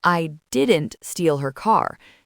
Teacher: If you stress I, it implies someone else did. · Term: sentence stress